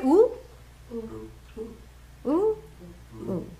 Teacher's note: How long did it take to say oo? One matra long. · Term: hrasva